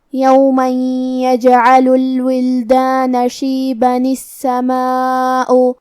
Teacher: ہم تنوین کی اصلیت جو کہ نون ساکن ہے اسے زیر سے پڑھیں گے · کلمت السماء میں حرف السین پہ تشدید ہے تو ہم 2 حرف کے برابر سین کو پڑھیں گے. یہاں حرف الالف پہ مد کا علامہ ہے، یہ مد واجب متصل ہے.